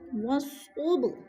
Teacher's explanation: صوب پہ قلقلہ ہو رہا ہے، با ساکن ہے، اس کو ہلا کر پڑھنا ہے